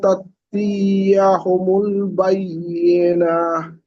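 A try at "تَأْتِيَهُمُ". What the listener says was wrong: তি টান হয়ে যাচ্ছে, তা তিয়া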